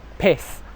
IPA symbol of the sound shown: ɪ